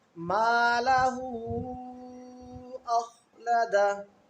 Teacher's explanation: یہاں پر ہا پر الٹا پیش ہے اور اس کے ساتھ مد ہے، مد منفصل ہے، تو اس کو تھوڑا لمبا کر کے پڑھیں گے